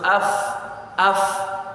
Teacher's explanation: You will notice that there's a release of air, a noticeable release of air with this. And if you put your hand by your throat while you pronounce af, af, you see that that sound will not give you any vibration while you are pronouncing it. The vocal cord will not vibrate at all. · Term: hams